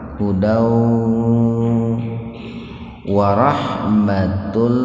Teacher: domatain dimasukkan ke huruf lam di sini tanpa mendengung. Biar tidak terdengar mendengung, maka jangan ditahan dua ketukan gitu Pak. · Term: idgham bila guna